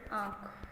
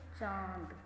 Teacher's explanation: उच्चारण में हवा मुंह के साथ नाक से भी निकलती है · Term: अनुनासिक